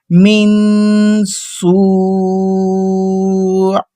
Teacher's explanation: سین ہماری جو زبان ہے وہ دانتوں کو لگ رہی ہے، سین، پھر سین ادا ہو رہا ہے.